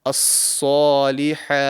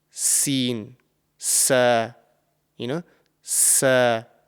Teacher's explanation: So this would be the correct pronunciation, and this letter has the same articulation point as the letter Sin, which is why there could be some sort of confusion when you're pronouncing this letter. But the top of the tongue is raised to the roof of the mouth to make it a heavy and thick sounding letter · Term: Sad